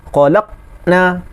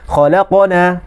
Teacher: Khalaqna, tapi bila dimasukkan sifat qalqalah, maka dia lantun, dia bergerak. Khalaqana.